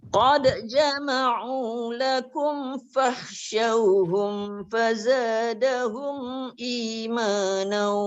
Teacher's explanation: Dekat mim bertemu fa. Ada dua tempat. Dia rapat betul bibir.